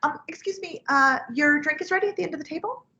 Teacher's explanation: Higher pitched customer service voice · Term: Starbucks voice